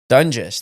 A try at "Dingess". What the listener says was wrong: But it's an I, not a U.